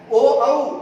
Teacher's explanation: इनका उच्चारण स्थान कंठ और होठ अर्थात गला और होठ की सहायता से बाहर आता है।